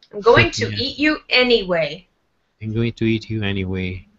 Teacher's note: At the end of anyway, make your voice go lower. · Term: intonation